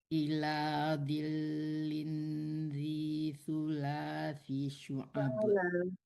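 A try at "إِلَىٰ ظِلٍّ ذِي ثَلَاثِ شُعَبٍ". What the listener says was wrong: salah bukan sula ulang lagi deh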